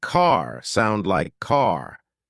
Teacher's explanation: American accent often uses a strong R sound